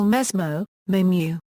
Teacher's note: Also from Northeastern Brazil and Spanish immigration comes debuccalization of coda sibilant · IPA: [meɦmu]